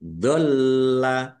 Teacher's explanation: Lamnya ada tasdidnya, dibaca double, ditahan dan ditekan biar tampak double.